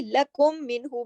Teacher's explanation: ایک میم ساکن ہے، دوسرا میم متحرک ہے، دونوں کو ملا بھی دیا اور غنہ بھی کیا۔ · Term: ادغام شفوی